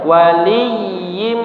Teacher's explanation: Adapun huruf ya itu sekedar ditasydidkan tanpa didengungkan. Jadi jangan wali bukan wali tapi langsung aja waliyim. · Yang didengungkan adalah yimnya ya. Karena tanwin bertemu dengan huruf mim. Kemudian satu lagi adalah huruf dod.